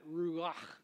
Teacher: It's got that CH sound in Hebrew that is a cross between the C and the H, and you get that guttural sound